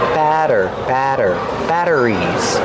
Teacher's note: We see the double T making a fast D sound.